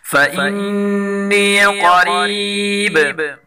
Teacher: نون مشدد غنہ کے ساتھ پڑھیں گے اور قاف کو پر پڑھیں گے اور را کو باریک پڑھیں گے اور با میں وقف کی وجہ سے قلقلہ کریں گے۔